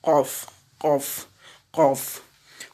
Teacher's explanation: La première lettre que nous allons voir, la plus en arrière, elle se prononce en élevant le fond de la langue vers la partie molle du palais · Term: la lettre Qaf